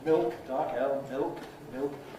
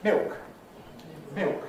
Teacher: And what's happened in London is that the actual lateral articulation with the tongue tip is lost leaving just the vowel coloring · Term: L-vocalization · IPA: [mɪok]